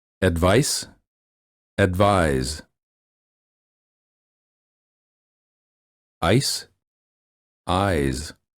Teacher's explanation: the first word of the pair ends with the voiceless consonant and the second with the voiced one notice the difference in vowel length